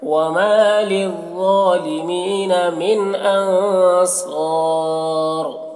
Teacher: وما الف مدہ ہے، اسے یہاں پر تو 1 الف کے برابر کھینچ کر پڑھیں گے۔